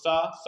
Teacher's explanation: सा में वत्सर्ग की सहायता ली जाती है।